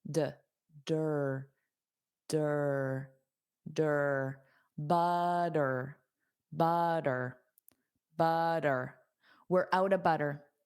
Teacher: Were were out of out of we're out of We're out of We're out of We're out of We're out of and then butter. Those two T's will become a soft D.